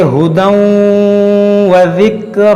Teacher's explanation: را کو موٹا کریں گے